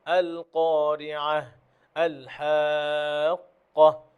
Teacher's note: যখনই গোলতাতে থামবেন, সুকুন করে থামবেন এবং হা শব্দ হবে, হায়ের আওয়াজ হবে। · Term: হা সাউন্ড